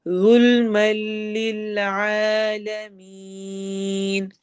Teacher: ज़ मोटा पढ़ा जाएगा